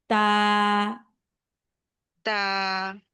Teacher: তাটা উচ্চারণ হবে হচ্ছে আপুরা জিহ্বাটা, জিহ্বার আগাটা উপরে দুই দাঁতের গোড়ার সাথে লাগাবেন, জিহ্বার আগা উপরে দুই দাঁতের গোড়ার সাথে লাগিয়ে উচ্চারণ করবেন